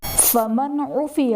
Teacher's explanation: نون ساکن کے بعد حروف حلقی میں سے عین آ رہا ہے تو یہاں پر اظہار کا قاعدہ ہوگا یعنی نون ساکن میں غنہ نہیں کریں گے